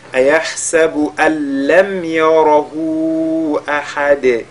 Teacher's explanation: Le ra est lu avec at-tafkhim et le dal de la fin avec al-qalqala